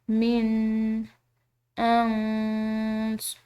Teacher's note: نون ساکن ہے، اس کے بعد قاد ہے، یہ بھی حروف اخفاء کا ایک حرف ہے، تو اس کو ہم مخفی کر کے پڑھیں گے